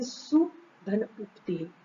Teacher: सु का ऊ, उक्ति का ऊ दोनों मिलकर बड़ा हो गया सुक्ति। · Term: दीर्घ ऊ